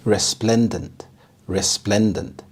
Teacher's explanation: The stress is on the second syllable, resplendent.